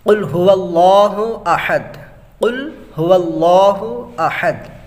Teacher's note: اللہ یہاں پہ لام کو پر کرنا پڑے کیونکہ زبر ہے